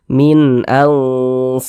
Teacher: Huruf hamzah huruf izhar halqi, maka hukumnya izhar halqi. Huruf nunnya dibaca jelas dan tidak berdengung, baca pendek saja.